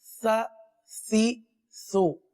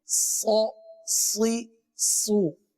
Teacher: سین کو باریک پڑھیں گے، آگے صاد ہے، صاد کو پر پڑھیں گے